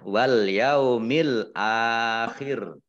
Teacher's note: karena wakof, roknya dibaca sukun dan dibaca pendek